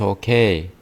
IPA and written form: oʊˈkeɪ (okay)